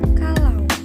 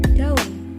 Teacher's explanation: Contoh dari diftong yaitu AU dalam kata Indonesia kalau, atau AI dalam kata Indonesia balai. Tetapi A plus U dalam kata Indonesia daun, atau A plus I dalam kata Indonesia air adalah contoh dari 2 vokal tunggal saja.